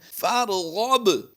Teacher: اس وقت آپ اپنی اسکرین پر جو لفظ دیکھ رہے ہیں فرغب، با حروف قلقلہ سے ہے، اور حروف قلقلہ میں قلقلہ اس وقت ہوتا ہے جب یہ ساکن یا مشدد ہوں، تو یہاں پر با حروف قلقلہ میں شمار کیا جا رہا ہے، اور یہاں پر ہم قلقلہ کریں گے اور جزم کو حالت وقف میں نہیں بدلا جاتا